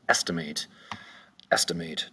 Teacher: 3 syllables. The accent is going to be over the first syllable